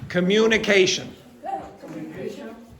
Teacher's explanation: The secondary stress is on the second mu